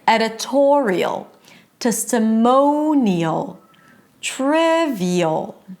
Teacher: in all of these words the stress is on the one syllable before the suffix